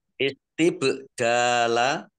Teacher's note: Kemudian bak sukun, ya. Istibdala, bak sukun, bacaan qalqalah, dibaca memantul, tampakkan pantulannya